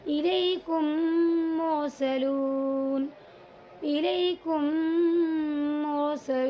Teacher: تو یہاں پر میم ساکن کے بعد دوسرا میم آیا ہوا ہے، تو یہاں پر ایک میم کو دوسرے میم کے ساتھ ملا کر غنہ کریں گے پہلے، الیکم مرسلون، الیکم مرسلون، یعنی میم کو میم میں ملائیں گے، پھر غنہ کریں گے، ناک میں لے جا کر تھوڑا سا تب پڑھیں گے۔ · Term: ادغام شفوی